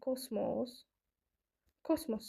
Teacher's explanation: kosmos sözündə vurğu birinci hecadadır